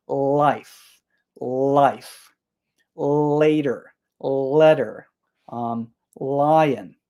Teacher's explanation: for that l sound your tongue is at the front of your mouth